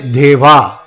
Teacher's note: not much air is thrown out therefore they are non aspirate